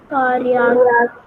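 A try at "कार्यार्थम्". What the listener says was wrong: Th. It is th. Karyartham. So you thought that you don't know, but you knew almost the whole word except this badly printed akshar.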